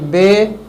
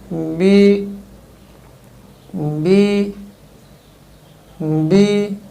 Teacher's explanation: مقدار بھی نہ بڑھے اور بے بھی نہ ہو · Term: زیر